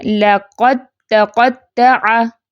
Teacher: اب قاف کو تا سے ڈائریکٹ ملانا ہے، اپنے دال کو ادا نہیں کرنا